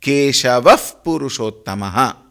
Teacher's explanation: The visarga before pavarga takes the form of fa.